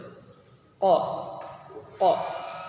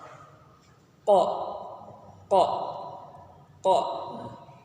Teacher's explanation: Qa, nafas ditahan, suara tertahan, syiddah. Kemudian pangkal lidah naik ke atas langit-langit. Kemudian juga tidak lancar dan hati-hati ismat, kemudian memantulkan suara karena qalqalah.